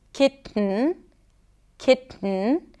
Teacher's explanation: Now, I can release the air through the nose, kitten, kitten, because I don't really pronounce the T here, but a glottal stop can help me make the sound a little shorter and quicker.